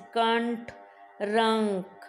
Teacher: अनुस्वार का उच्चारण करते समय हवा नाक से बाहर निकलती है।